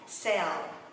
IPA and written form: sel (Sale)